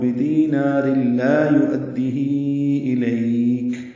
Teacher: بدینار میں را کو لام سے جو ملانا ہے یہ ادغام کامل ہے